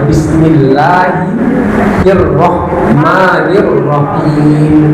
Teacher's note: Bismillah itu ee tipis lamnya